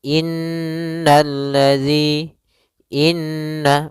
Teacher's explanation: Pada bacaan inna, di sini ada huruf nun yang berharakat tasydid. Maka cara membacanya yaitu kita menahan suara nunnya. Suara nun kita tahan dulu baru dibaca. Jangan langsung innalladzi, tapi tahan dulu 2 ketukan. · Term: gunnah